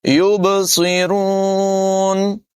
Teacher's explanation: با حروف قلقلہ میں سے ہے، اس میں قلقلہ خوب ظاہر کریں گے. يُبْصِرُونَ، صاد بھی پر ہوگا اور را کو بھی پر پڑھیں گے.